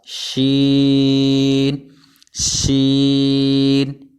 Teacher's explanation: اس کے بعد حرف ہمارے پاس شین شین، یہ 5 الف جتنا کھینچ کر پڑھا جائے گا اور یہ حروف شجریہ ہیں، زبان کے درمیان اور تالو کے درمیان سے یہ ادا ہوتا ہے